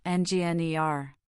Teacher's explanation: Engineer has stress on the last syllable.